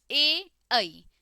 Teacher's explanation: ए ऐ जीभ आगे आ जाती है तो अग्र भाग काम करेगा।